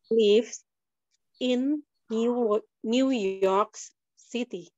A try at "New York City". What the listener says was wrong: K-nya mana? York. City atau city. Kalau city itu kayak huruf D itu American. City boleh, city boleh.